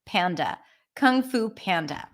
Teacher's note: a p is also aspirated there's a little H